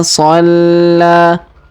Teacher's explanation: Huruf la kita tahan dan tekan, kemudian kita panjangkan 2 harokat ya, karena pertama tanda tasdid di atasnya, lalu alif kecil juga di atasnya, dan alif bengkok atau alif maksurah di depannya.